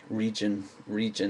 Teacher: In the word region, the English accent and the American accent use the R largely in the same way. Region, region, it's pretty indistinguishable.